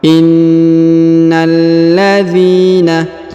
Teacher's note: Ditahan dan ditekan pada huruf lamnya.